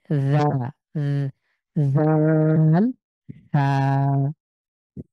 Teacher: জীবটাকে বের করেন প্রথমে সামনের যে দাঁত রয়েছে সেটার সাথে লাগান এবং পাতলা করে বাতাস বের করে জাল [মিউজিক] হা অবশ্যই জিব বের করতে হবে এবং দাঁতের সামনে